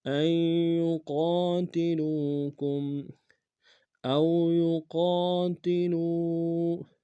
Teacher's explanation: او میں واولین بغیر کھینچ پڑیں گے، یقا میں قاف الف مدہ کے کنارے میں کھینچیں گے، لام کو واو کے سامنے آئیں گے، واو مدہ کے کنارے میں کھینچیں گے۔